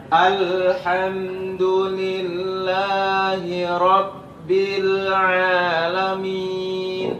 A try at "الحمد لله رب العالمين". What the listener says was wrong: Masih ada permasalahan lam antum lebih tebal sedikit. Tipis, jangan tebal. Selalu tipis. Jangan sampai pada saat pengucapan huruf lam pangkal lidah kita yang ngangkat. Itu terjadi tebal seringan begitu. Jangan sampai jangan l ujungnya aja.